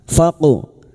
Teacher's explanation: huruf qof yang mati asli di tengah kalimat qalqala sugro jangan lupa dipantulkan